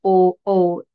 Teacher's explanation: कंठाचा पण होतो आणि ओठाचा पण होतो तर कंठोष्ठ